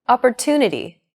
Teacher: are stressed are valued greater than syllables that are unstressed opportunity the stress syllable to in Opportunity is deemed more important so it's pronounced longer than all other syllables listen to it again opportunity this gives English a machine gun-like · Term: stress timed language